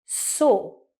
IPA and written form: sɔː (saw)